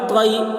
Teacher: یا لین کو نرم آواز کے ساتھ جلد پڑھیں، معروف پڑھیں، مجہول آواز سے بچیں